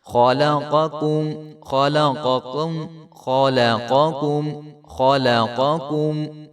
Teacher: خا کو موٹا کریں گے اور لام کو باریک کریں گے، اور آگے پھر جو قاف ہے اس کو موٹا کر کے پڑھیں گے، اور اس کے بعد جو کاف آ رہی ہے وہ باریک کاف ہے.